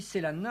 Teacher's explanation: Sappho dit sélana avec deux consonnes, un redoublement de la consonne.